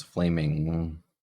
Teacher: you can kind of feel air come out of your nose so this is a nasal sound